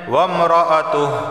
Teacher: وقف کی صورت میں تہ ہا ساکنہ کی آواز آئے گی